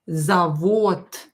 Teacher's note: And here D at the end is pronounced as T, завод, because D is voiced consonant, and voiced consonant becomes unvoiced T when it's located at the end of the word. So we will pronounce it as завод.